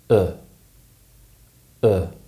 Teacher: this sound is generally produced with the middle of the tongue raised in modern pronunciation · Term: uh sound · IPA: /ʊ/